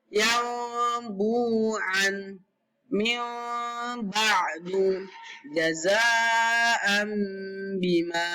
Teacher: Iqlab adalah yaitu bunyi nun sukun atau tanwin bertemu dengan ba berubah menjadi suara mim sukun dan dibaca dengan dengung 2 harokat. Nun sukun, tanwin an, tanwin in, tanwin un bertemu dengan ba, maka hukum tajwidnya adalah iqlab.